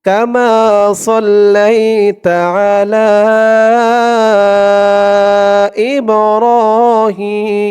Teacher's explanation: থামার কারণে এই জেরের পরে ইয়া সাকিন এক আলিফ টানটা তিন আলিফ টান হয়ে যাবে